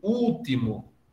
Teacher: Eu ouço algumas pessoas dizendo último, arrastando um pouquinho mais o U, como se fossem dois U's. Uma vez que pronuncia o L como se fosse um U no fim de sílaba, arrasta como se fosse dois U's.